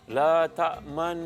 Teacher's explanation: Yang pertama, nun dibaca dengan dua cara, iaitu ismam. Memuncungkan dua bibir kita dengan dengung dua harakat.